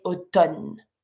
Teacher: And when you speak, it's completely different because when you write it, you see there's the MN, automne. But when you say it, we just don't pronounce the M.